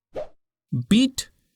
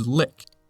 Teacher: They are both pronounced with the tongue forward and towards the top of the mouth. But after finishing pronouncing the longer /i/, you need move your tongue a little bit lower and slightly back to pronounce /ɪ/.